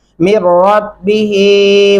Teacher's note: ये जो जज़म वाला नून है इसको छोड़ देंगे, मीम को डायरेक्ट रा के साथ मिलाना है हमें।